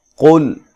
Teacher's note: قاف کو موٹا ادا کرنا ہے، لام کو ہلانا نہیں ہے اور موٹا بھی نہیں پڑھنا